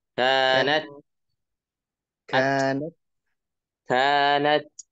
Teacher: Huruf taknya tunaikan sifat hamsnya. Keluar angin ya ketika sukun terutama.